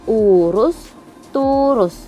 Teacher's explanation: vokal U tinggi bawah belakang